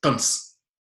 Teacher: Ya es una sola sílaba, ¿sí? Entonces, esa última sílaba que tampoco tenía prominencia acentual, casi que se perdió toda. Lo único que se conservó es la fricativa